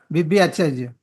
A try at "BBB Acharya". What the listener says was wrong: BBB no not BB is BBB.